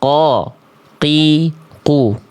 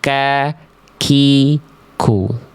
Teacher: Kalau kof lebih dalam, ko, ki, ku. Kalau kaf lebih luar, lebih depan, ka, ki, ku.